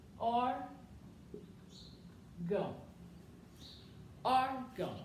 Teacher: a sílaba forte, sílaba tônica é o or